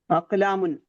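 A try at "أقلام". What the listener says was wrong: അവസാനത്തെ നൂന് കേൾക്കണം. അവസാനം ഒരു ന്യൂനുണ്ട്, അറിയുമോ? തൻവീൻ എന്ന് പറഞ്ഞാൽ എന്താ? അവസാനം നൂൻ ഉച്ചരിക്കുക എന്നാണ്. കലമുൻ, അക്കലാമുൻ.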